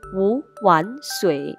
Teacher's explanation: 由于前面两个字成词，所以我们把前面两个字换作第二声，所以变调后将读成五碗水